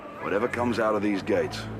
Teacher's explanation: in this sentence whatever comes and gates are stressed they're the content words of the sentence we don't need to stress the other ones these two words